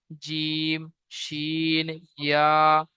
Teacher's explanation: 6 নম্বর মাখরাজ জীবের মাঝখান এবং তার বরাবর উপরে তালুর সাথে লাগিয়ে উচ্চারিত হয় জিম শিন ইয়া